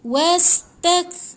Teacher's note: Kaf ni jangan baca macam ada pantul, tetapi dia ada angin. Yang ada pantul bunyi macam ni yang tak boleh baca.